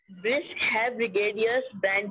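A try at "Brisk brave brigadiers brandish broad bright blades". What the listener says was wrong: Have nahi hai, beta. Brisk brave. Bara bra a brave.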